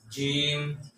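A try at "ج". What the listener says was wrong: আরেকটু ভিতর থেকে এই যে জি জি জি একটু ভিতরে একটু ভিতর থেকে জি জি জিম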